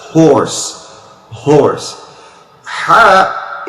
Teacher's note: in english however it is not the perfect h because h when you say ha horse you make the voice to come out from the end of your throat